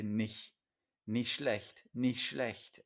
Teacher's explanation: when this word especially is said quickly, this first word, a lot of the times you just say nicht, nicht schlecht, and you swallow the T.